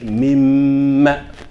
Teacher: So the doubling should be longer than the vowel in this case.